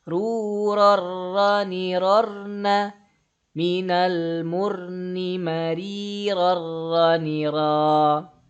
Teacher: Suaranya dilebur, suara an di tanwin ini dilebur ke huruf ro, tapi nggak pakai gunnah. Ya, nggak pakai gunnah dia, langsung. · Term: Idgham bila gunnah